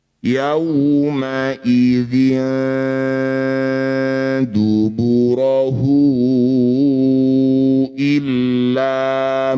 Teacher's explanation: Ini disebut bacaan madilah qowah. Cara bacanya hu yang bertanda layar panjangkan lima harakat atau lima ketukan.